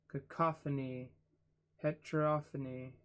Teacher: Dactylic. Stress is on the third from last syllable of each word.